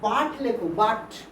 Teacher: বাটেতে ইউর উচ্চারণ হয়ে যাচ্ছে আ